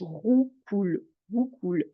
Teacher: je prononce mon ou et mon r racle le fond de ma gorge